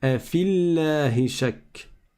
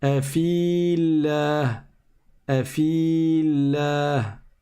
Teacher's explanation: Comme le premier soukoun est sur une prolongation, on ne prononce pas la prolongation. Donc on passe directement de la lettre fa à la lettre lem et on dit afillahi shak.